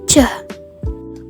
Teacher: tiba-tiba sehingga bunyinya meletup contoh dari palatal give adalah bunyi cah bunyi cecak dihasilkan karena terjadinya pertemuan antara lidah dan langit-langit keras dan juga bunyinya meletup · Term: palatal positif